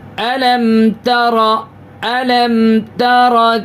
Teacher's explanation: ناک میں آواز دیر تک نہیں روکیں گے